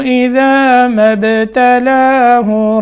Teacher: اذا ما ابتلاہ، میم کو با سے ملانا ہے، قلقلہ کرنا ہے